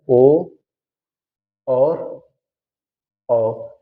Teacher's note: कंठ और ओठ से जो बोले जाते हैं, तो ये कंठोष्ठ स्वर कहे जाते हैं।